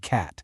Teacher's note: There's the short sound, which is usually quick and kind of punchy, like the a and cat.